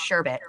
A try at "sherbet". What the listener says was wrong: There's no R in the word. No, there's literally no R. It's sherbet. Not silent. just fucking ain't there. It's invisible.